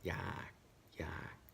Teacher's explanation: So now instead of a falling tone, it is a low tone.